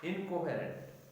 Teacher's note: Similarly, this feature changing rule changes alveolar to velar. So the N is pronounced as a velar nasal before morphemes that begin with the velar consonants K or G in words like incoherent.